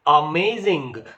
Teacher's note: a is weak May is strong and Zing is weak